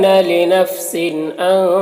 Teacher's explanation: تنوین کے بعد حمزہ ہے حروف حلقے میں سے، تو تنوین میں اظہار ہوگا، تنوین کو ظاہر کر کے جلد پڑھیں گے